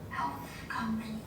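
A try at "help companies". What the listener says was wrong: Tại em cứ quên âm cuối hoài. Help a number of customers thì không xì.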